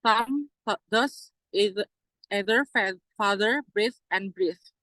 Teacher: dental fricative. The tongue were placed between the front teeth. In fact, however, the tongue is normally placed behind the teeth.